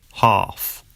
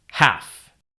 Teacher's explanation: Ah in UK English normally becomes an a sound in American English.